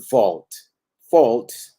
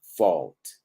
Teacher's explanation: muy común que la A, la U con la L suene como una O que se va desplazando a una posición más relajada a un schwa